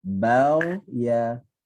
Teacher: daripada ba senyum, ghin tak senyum, ya senyum.